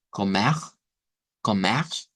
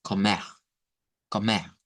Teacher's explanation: tenemos dos pronunciaciones con R gutural, que sonaría como comer, comer, y con el sonido reemplazando la R gutural por el sonido de una H, que aquí recuerden que la H suena como J, entonces digamos comer, comer.